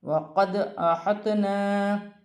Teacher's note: دال ساکن ہے، حروف قلقلہ میں سے ہے، قلقلہ کے ساتھ ادا کیا جائے گا۔ تو ساکن ہے، تو کو ہا کی حرکت کے ساتھ ملا کر پڑھا جائے گا۔